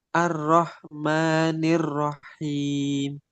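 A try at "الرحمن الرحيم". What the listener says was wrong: Dipelankan dulu di roknya. R, coba. R.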